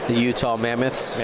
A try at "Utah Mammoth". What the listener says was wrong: Mammoth, not Mammoth. It's like the Kraken. It's not the Krakens. It's a singular mammoth.